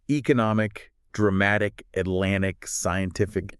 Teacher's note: the stress usually lands on that second to last syllable